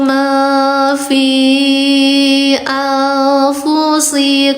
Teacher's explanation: I-nya ada lima. Dibacanya panjangkan lima harakat. Hukum tajwidnya mad jaiz munfasil disingkat menjadi mj.